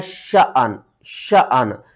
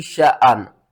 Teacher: शअन अलिफ को झटके के साथ पढ़ना है